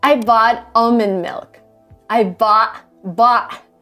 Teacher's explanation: this is called glottal stop and it's a stop that you make with your throat so instead of saying bot you say B it is a